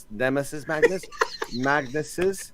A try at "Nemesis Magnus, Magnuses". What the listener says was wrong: No, that sounds like a question. You're accenting the end of your sentence. That bit in Anchorman where they leave the question mark by accident. He goes, "Good night, Seattle."